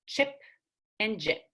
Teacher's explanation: tongue blade and hard palate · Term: CH and J